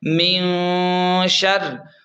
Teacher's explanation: نون پر غنہ کریں گے کیونکہ نون ساکن ہے اور نون ساکن کے بعد حروف حلقی میں سے کوئی بھی حرف نہیں ہے، یعنی حمزہ ہے، عین ہا غین خا میں سے کوئی بھی حرف نہیں ہے تو یہاں پر غنہ ہوگا. اور نون ساکن کے بعد اخفا کے 15 حروف میں سے شین ہے تو اس لیے یہاں پر غنہ ہوگا